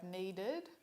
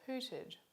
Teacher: the consonant at the end of the root is too similar to the consonant of the suffix. They're both alveolar plosives. They need to be separated by a vowel, so the most neutral vowel, the schwa, is inserted to keep the consonant of the suffix separate from the consonant of the root.